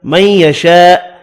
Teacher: ادغام مع الغنہ ہوگا، بڑی مد کو 5 الف کی مقدار میں کھینچ کر پڑھیں گے